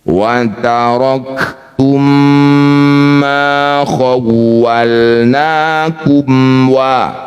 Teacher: Bunyi mim pertama masukkan pada mim kedua. Dengungkan dua harakat. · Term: idgham mimi